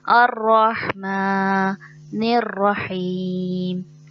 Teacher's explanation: ہا جو ہے وہ حلق کے درمیان سے ادا ہوتا ہے